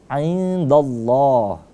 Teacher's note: Nunnya kita sama-samarkan karena nun mati bertemu dengan huruf dal, hukum bacanya menjadi ikhfa, samar-samar ya. Lafaz Allahnya menjadi tebal bacanya indallah karena dia tafkhim.